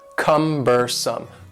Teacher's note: The word cumbersome has 3 syllables, and the stress is on the first syllable.